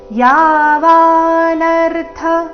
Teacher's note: ಗಮನಿಸಿ ಮೊದಲನೇ ಚರಣದಲ್ಲಿ ಎಲ್ಲಿಯೂ ಆಘಾತ ಇಲ್ಲ ರಸ್ವ ದೀರ್ಘಗಳ ಮೇಲೆ ಗಮನ ಕೊಡಬೇಕು ಯಾವಾನರ್ಥ ಮೊದಲನೇ ಎರಡು ಅಕ್ಷರ ದೀರ್ಘ ಮುಂದಿನ ಎರಡು ಅಕ್ಷರ ರಸ್ವ